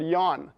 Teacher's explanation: When you pronounce yawn, you're kind of yawning. You're rounding your lips. You're making the glide sound, that, this pressure that is involved in yawning.